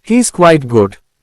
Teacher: If you hear the words, "He's quite good," with a rising tone on good, commonly called, intonation, you get the impression that the speaker has left something unsaid.